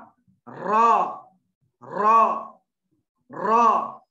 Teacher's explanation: नोके जबान की पीठ और ऊपर के दरमियानी दांतों के मसोड़ों से एक हर्फ रा, एक हर्फ रा निकलता है